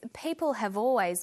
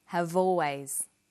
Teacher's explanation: Notice how in conversation we link the final consonant sound v with the initial vowel sound or.